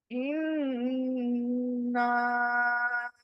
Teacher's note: پہلے نون کو گنگنایا، پھر نا کو کھینچا